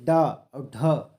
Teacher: जब ये ड और ढ, ये ड और ढ जब बोलते हैं तो हमारी जीभ उसी मूर्धा में टच होती है, इसलिए इसे मूर्धन्य कहते हैं।